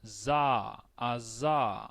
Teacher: la S con voz, za, aza, que es vibrante